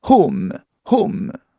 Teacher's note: 우리는 이중모음을 단모음화합니다. 영어는 말이죠. 오가 없습니다. 다 어우, 어우, 어우 이거예요.